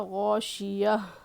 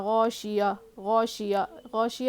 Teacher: جو لاسٹ میں جو چھوٹی ہا ہوتی ہے نا اس کو ایک دم کلیئرلی پڑھنا ہے